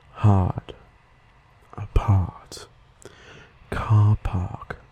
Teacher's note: we do not pronounce the R sound like people from the u.s. do